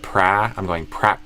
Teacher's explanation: You might only hear the first part of the K. You might not hear the K.